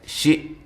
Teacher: حمزہ کو تحقیق کے ساتھ، جھٹکے کے ساتھ